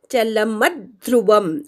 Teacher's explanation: ल नंतरच्या म वर आघात घ्यायचा आहे